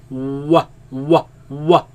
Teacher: Wow, you use both lips only.